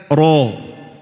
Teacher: أسلة يعني الطرف الحاد الدقيق، فإذا أردت أن تخرج الراء المفخمة ستخرج الراء بهذا كله، أي بالذلق الأيمن والذلق الأيسر وأسلة اللسان